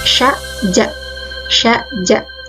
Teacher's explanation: Nah, bunyi periferal ini biasanya ujung lidah ini terletak di atas langit-langit mulut. Langit-langit mulut yang keras, ya. Nah, biasanya menghasilkan bunyi sya ja.